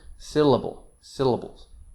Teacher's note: the first syllable is stressed main stress and the other two syllables are light they're very short light softer kind of flat intonation syllable syllables and that's what makes the rhythm of english and